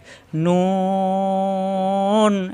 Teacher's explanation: নুন জিহ্বার আগার উপরের তালুতে জিহ্বার আগা উপরের তালুতে লাগবে